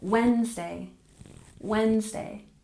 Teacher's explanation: in this word we tend to drop the D and we pronounce it with stress on the first syllable